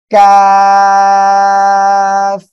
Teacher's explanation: কাফ অক্ষরটা উচ্চারণ হবে জিব্বার গোড়া থেকে একটু আগে বাড়িয়ে তার বরাবর উপরে তালুর সঙ্গে লাগে উচ্চারণ হবে